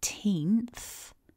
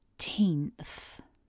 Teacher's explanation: We begin with the t, followed by a long e, and then we've got this cluster where we have the n up in the nose, that nasal n, followed by th, so the tongue is between the teeth